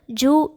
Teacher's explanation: ஜூ என்று சொல்லும்போது நம் வாய் குவிந்து காற்று வெளியேறுகிறது